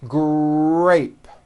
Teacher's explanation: in the word grape the r sound is stronger and you even hear it more than the G sound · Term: R Blends, R blends